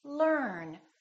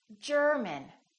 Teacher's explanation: the American R is never silent it's not silent at the end of the word and also before another consonant